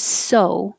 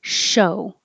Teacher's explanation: the clear s your tongue makes a very small narrow opening for the air to have more pressure